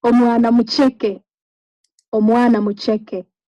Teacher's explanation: So omwana doesn't have that high tone, but mucheke does.